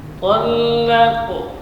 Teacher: Kemudian qalqalah sughra itu huruf qaf. Sini dibaca tebal karena qaf termasuk huruf tebal